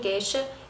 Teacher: houve casos de monotongação, como em geisha